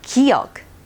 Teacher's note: do you hear the sound of g in the beginning and the last of the sound kiyok